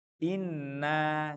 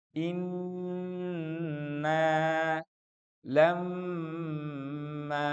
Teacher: Karena dia tidak akan ungkul suaranya. Karena nun tasdid dan mim tasdid itu adalah suara hidung tanpa melibatkan mulut dan lidah kita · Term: gunnah